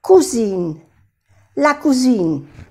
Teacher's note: Pero cuando se le añade una E de femenino, ya se pronuncia cousine, cousine. Cuando hay una S, se pronuncia suave la S, más como una Z.